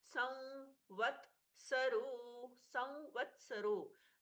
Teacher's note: व के पहले अनुस्वार है, उसका भी व जैसा हल्का सा नाक से उच्चारण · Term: चंद्र बिंदी वाला व